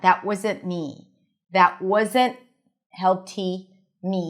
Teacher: When the T is between two consonants, it is often dropped in American English.